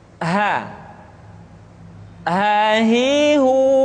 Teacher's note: Selanjutnya huruf ha dikeluarkan dari tenggorokan yang terjauh, sama seperti kita mengucapkan huruf a.